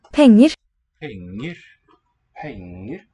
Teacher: there's that falling motion on the stress syllable and then nice clear upstep, like a fifth or so, to the unstressed hex syllable.